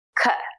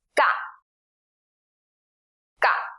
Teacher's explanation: it is an unaspirated K